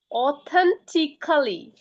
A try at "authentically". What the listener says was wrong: না, ও নয়, Authen. Authen. T. Curl. E. এখানে কাল ই যদিও আছে, কিন্তু মানে দ্রুত উচ্চারণের ক্ষেত্রে এটা ক্লি হয়ে যায়, authentically.